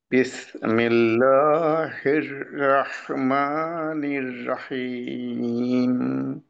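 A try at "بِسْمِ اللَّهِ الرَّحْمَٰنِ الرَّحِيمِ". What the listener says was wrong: টানটা আরো লম্বা হবে মিম ছোট হবে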